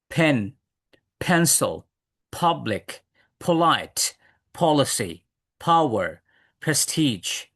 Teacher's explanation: দুই ঠোট বন্ধ করব কিন্তু বাতাস হালকা বাতাস বের করব